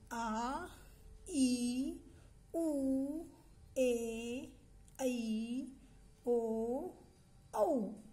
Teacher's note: यांचा उच्चार करण्यासाठी आपल्याला खूप वेळ लागतो तर या स्वरांना काय म्हणतात दीर्घ स्वर म्हणतात